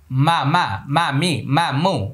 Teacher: শুরুতেও ঠোট লাগবে শেষেও ঠোট লেগে যাবে